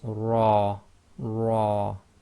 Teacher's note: the letter ra with fatha must be pronounced heavy